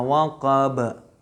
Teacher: ini qalqalah kubra. Kenapa? Karena sukunnya disebabkan oleh waqaf.